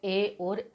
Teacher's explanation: ए और ऐ, इसका उच्चारण स्थान कंठ और तालु होता है, क्योंकि ये दोनों से ही बोला जाता है। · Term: कंठ तालु